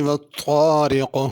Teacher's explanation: والطارق میں طا ہے، اس کو طارق چھوٹی تا سے نہیں پڑھنا۔ اور والطارق بڑا قاف ہے آخر میں، اس کو چھوٹا کاف نہیں پڑھنا۔